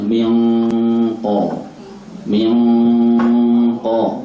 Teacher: rapat dan suaranya tebal karena yang dihadapi huruf tebal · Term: ikhfa